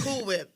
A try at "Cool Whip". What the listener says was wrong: You gotta say, you gotta kind of pronounce the H. You gotta pronounce the H.